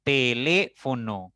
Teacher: nuestra mayor intensidad al pronunciar está en le en esa sílaba por lo tanto suena más fuerte